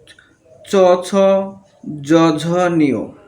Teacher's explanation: ছ মহাপ্রাণ, জ অল্পপ্রাণ, ঝ মহাপ্রাণ, নিয় নাসিক্য বর্ণ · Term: তালেব্য বর্ণ